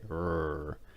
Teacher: for the R, there's really no movement of your tongue. It's more of a kind of growl, like a dog. Like they growl, they say "rrr," and that's the sound you make for the R.